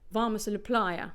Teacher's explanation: So the mos, which is not stressed, and the a la, which are function words and which are therefore reduced, will not sound fully pronounced. The vowels will not be fully pronounced, they'll be reduced. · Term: weak form